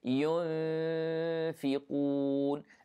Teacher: Here we have ikhfa, we hide the noon, and the sound of the ikhfa here is light because the fa is light. Okay, so don't say ينفقون, no, it is ينفقون, and the qaf is heavy.